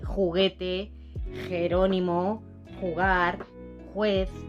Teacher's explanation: tienen el mismo sonido, un sonido sordo, muy gutural